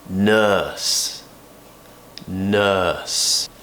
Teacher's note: we open the mouth quite relaxed very similar to how the mouth is when we create the schwa sound but but we need to make it longer the tongue needs to be kind of in the middle of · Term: the earth sound